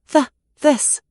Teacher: For the voiced the in this, add some buzz with your vocal cords.